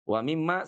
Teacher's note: mimma itu pun juga masuk dari rongga hidung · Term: ghunahnya